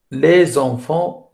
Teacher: C'est la prononciation d'une consonne finale d'un mot devant un mot commençant par une voyelle. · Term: liaison